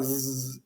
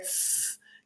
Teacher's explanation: Acredito que é voiced or unvoiced, que é o com voz e sem voz, que é o com som com Z, que é você fala zzz, e aí vai tremer as cordas vocais aqui na sua garganta, e o som do S, que é ss, que não vai tremer, então é sem voz, né? Como se fosse mudo. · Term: vozeado e não vozeado